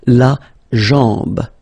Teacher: Remember, A-M, when you combine these two, basically it's just like A-N, so it's nasal and it's en